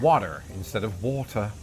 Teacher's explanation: When speaking fast or informally, Americans will substitute the T in the middle of the word for a D sound